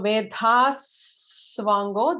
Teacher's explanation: So Vedhas Swango, there will be an extra sibilant, S will be added there.